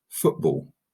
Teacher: foot is unstressed ball is stressed · the first syllable is unstressed the second is stressed so for example in the word football okay foot is unstressed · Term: iambic